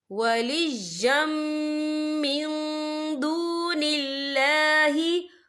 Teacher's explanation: یا کے پر تنوین ہے، تنوین کے بعد جو ہے میم آ رہا ہے، اور میم جو ہے حروف یرملون میں سے ہے تو یہاں پر ادغام ہوگا، تو ہم اسے غنّے کے ساتھ پڑھیں گے